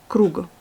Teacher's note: Et vous avez encore le g est précédé par une voyelle, donc il devient sourd à la fin du mot